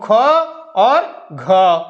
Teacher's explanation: इनके उच्चारण में वायु ज्यादा मात्रा में निकलती है इसलिए इनको क्या कहा जाता है महाप्राण